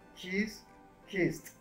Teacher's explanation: Kiss. La S es sorda, entonces vas a hacer un sonido de T para el pasado.